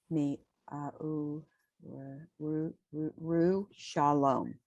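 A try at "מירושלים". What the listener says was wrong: No, read the vowels at the end. You gave up at the end. Mi Yerushalayim.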